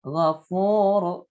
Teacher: Nah, ini fu mad tabi'i. Ru tafkhim ra-nya berharakat dhamma